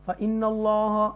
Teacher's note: फ़इन्नल्लाह बिही अलीम, और एंड वाला मीम दुम्मातैन जो है या मीम दो पेश मुन जो है ये साकिन मीम साकिना में हो जाएगा, मीम साकिना में वक्फ की सूरत में, तो अलीम पढ़ेंगे। फ़इन्नल्लाह अल्लाह के नाम को तफ़कीम के साथ पढ़ेंगे